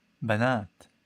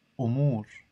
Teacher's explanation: Each of the example words has two vowels. The first is short, the second is long.